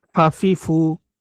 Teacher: সামনের উপর দুই দুই দাতটা নিচের ঠোটের পেটের সাথে লাগাবো